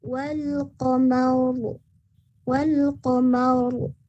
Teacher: Ketebalannya itu ada huruf o-nya di sana. Seperti ada huruf o-nya, tapi bukan wal qamaro ya. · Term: ro tafkhim